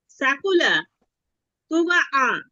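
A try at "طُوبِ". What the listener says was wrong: না না, বায়ে জের আছে আপু। জের, এটা জের, হ্যাঁ, বায়ে জের আছে, এই যে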